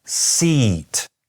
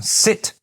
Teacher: you should be able to hear that seat is somewhat longer than sit